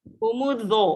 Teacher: Kejap, dia masih ada bunyi z. Dia tak boleh ada desiran. Humudz, hujung lidah keluar. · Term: dha